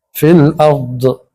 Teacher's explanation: ضاد ادا کرتے ہوئے زبان داڑھوں سے لگے گی